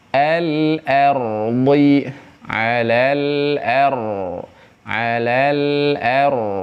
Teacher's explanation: Pangkal lidahnya dinaikkan ke langit-langit bagian belakang. Jadi si pangkal lidah ini dia tegang naik ke atas ya. Nah, naik ke atas seperti ini ke kalau bahasa Sundanya ada lak-lakan di sana. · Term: ditafkhimkan